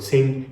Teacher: there's not really a G pronounced at the end, so it's a very nasal sound